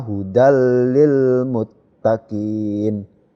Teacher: langsung masuk tidak mendengung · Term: bilagunnah